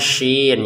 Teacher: Kalau shin itu seperti ya, lebih banyak nafas yang keluar